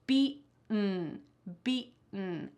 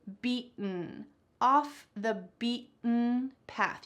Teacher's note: Feel your throat when you try to say this. I want you to kind of swallow that T sound. This is called a glottal T